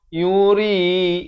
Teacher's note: Ri jadi nipis di sini. Dibaca 2 harakat.